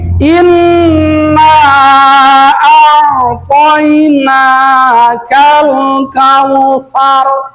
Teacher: Jadi nun musaddah ditahan 2 harokat dengan mim musaddah. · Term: Gunnah